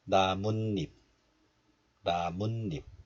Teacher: So we added 사이시옷, but the next letter starts with the vowel E. So this 사이시옷 is pronounced as 니은, and another 니은 is added as the first consonant in the place of 이응. So 묻 becomes 문, 잎 becomes 잎, 나뭇잎, 나뭇잎.